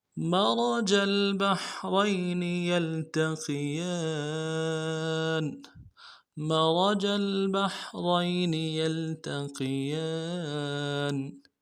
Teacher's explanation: جیم کو آگے لام کے ساتھ ملانا ہے